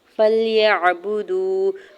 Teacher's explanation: فلیعبدوا، فا کے زبر کو لام ساکن کے ساتھ ملائیں گے، یا کے زبر کو عین ساکن کے ساتھ ملاتے ہوئے پڑھیں گے، با کے زبر کو، با کی پیش کو بغیر کھینچے ہوئے ادا کرنا ہے، اور واو ساکن سے پہلے دال کے اوپر بھی پیش ہے تو یہاں واو مدہ ہو رہا ہے، دو حرکت کھینچ کے ادا کریں گے